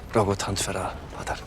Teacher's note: the actor has this beautiful retracted S sound, which I think is native to his German